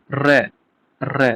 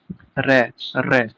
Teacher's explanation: इसमें मुख द्वार जीभ की नोक से शीघ्र ही बंद होता है। दो-तीन बार खुलता रहता है। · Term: लुंठित